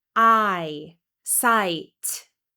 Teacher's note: This is another diphthong from A to I.